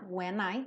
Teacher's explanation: N, já vou juntar no I.